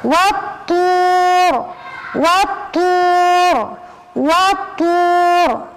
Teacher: Monyong karena dia domah, bukan monyong karena urut to